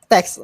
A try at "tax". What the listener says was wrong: Tax. So not test. So not test, but tax. Tax. Tax. So tax, not ta. Te.